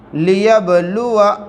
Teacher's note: یہاں پر با کے اوپر جزم ہے، قلقلہ ہوگا